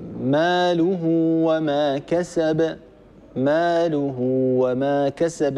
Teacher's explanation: الحرف الذي بعد هاء الكناية هنا حرف غير الهمزة، بالتالي هذه الصلة هي صلة صغرى. الصلة الصغرى تلحق بالمد الطبيعي وتمد بمقدار حركتين